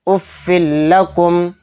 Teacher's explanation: اس میں ہم غنہ نہیں کریں گے، اس کو بلا غنہ کے جلد پڑھیں گے۔ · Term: ادغام بلا غنہ